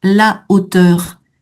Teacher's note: Attention à ce H aspiré la hauteur et tous les mots de la famille de hauteur ont ce H aspiré donc pas de liaison